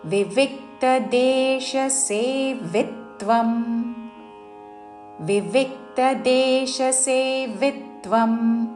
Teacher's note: వివిక్త రెండవ వి మీద ఆఘాత పలుకుతూ